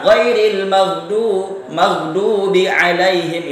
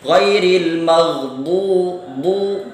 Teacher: Dha itu pengucapannya tebal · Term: huruf dha